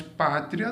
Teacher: Pátria eu tenho o i que quase não sai e depois o a que sai muito forte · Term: ditongo crescente